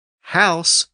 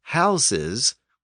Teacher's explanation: the Z sound is the voiced version of the S sound